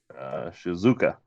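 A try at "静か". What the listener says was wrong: Yeah, Shizuka. You did that almost perfectly. The not Japanese well, but perfectly in the mistake. English speakers, we like to put the emphasis on the second syllable, so that's why he says Shizuka, or this is just more of a Shizuka.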